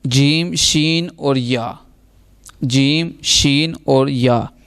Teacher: جیم، شین اور یا، زبان کے درمیان اور تالو کے درمیان سے یہ ادا ہوں گے